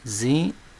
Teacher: Veja que a sílaba tônica é a penúltima aqui, é o zi